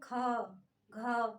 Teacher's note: अधिक वायु के साथ हाकार या गर्जना हो उसे हम कहते हैं महाप्राण